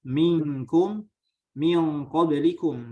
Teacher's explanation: makhrajnya kita langsung ditempelkan ke makhraj kaf tersebut. Nah, tapi masih disebut dengan ikhfa. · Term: diitbakan